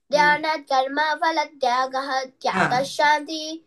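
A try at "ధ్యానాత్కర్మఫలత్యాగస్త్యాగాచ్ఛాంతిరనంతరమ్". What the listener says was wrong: second line లోనే దీర్ఘాలు ఎక్కువ పెడుతున్నావ్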